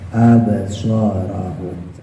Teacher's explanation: jangan lupa shotnya dimonyongin